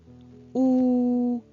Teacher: теж відкритий повітря вільно проходить кріз ротик промовимо звук у у губки складаються у кружеч так і нам його легко вимовляти ми можемо протягнути цей звук